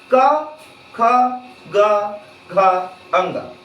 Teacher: हमारा फेफड़ा से हवा निकल रहा है और कंठ पे आके टकरा रहा है, इसलिए हमारा उच्चारण स्थान कहां हो जाएगा, तो कंठ हो जाएगा